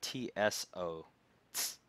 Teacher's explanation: It's very sharp, kind of, using the tip of the tongue on the top of the mouth.